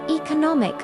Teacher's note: E-co-no-mic. Stress moves to third syllable.